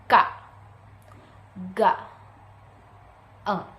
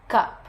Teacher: Produced consonant sounds when the back part of the tongue touches the soft palate. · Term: Velar sounds